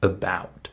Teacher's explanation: in the word about that first syllable is unstressed right I'm saying I'm not saying a about or a about